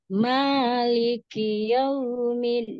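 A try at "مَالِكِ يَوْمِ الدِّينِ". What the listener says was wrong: Midnya jangan masuk hidung ya. Yaumiddin. Din. Yaumiddin.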